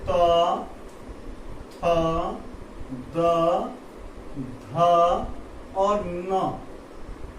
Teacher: ये देखिए, आपको हमने भी कहा था कि हिंदी ध्वनियों के उच्चारण स्थान, तो हिंदी ध्वनियों के उच्चारण स्थान क्या है, हिंदी ध्वनियों के उच्चारण स्थान जैसे कि दंत यानी कि त वर्ग, जैसे में त, थ, द, ध और न, ये जितनी भी ये व्यंजन वर्ण हैं इनका उच्चारण स्थान त मतलब दंत से होता है